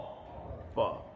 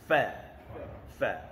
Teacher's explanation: hujung gigi atas bersentuhan perut bibir bawah sebelah dalam yang basah itu. Fa.